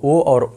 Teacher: ओ और औ का उच्चारण स्थान क्या होता है? कंठो ओष्ठ होता है।